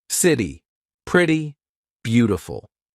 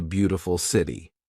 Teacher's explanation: this is when T sounds like a very quick D very big in American pronunciation so when the letter T is in between two owl sounds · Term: flap T